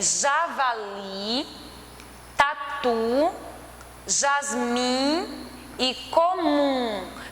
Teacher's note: Percebe que a última sílaba ela é mais forte, então ela é oxítona. Não é acentuada, porque não segue a regra de acentuação de oxítona, mas é oxítona porque a sua última sílaba é a mais forte.